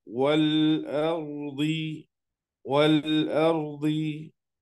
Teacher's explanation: Di situ alif lamnya ketemu hamzah, maka bacaannya jelas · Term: izhar